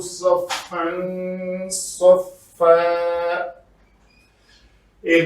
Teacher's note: یہاں پہ صاد کو پر ادا کیا تاکہ سین سے مشابہت نہ ہو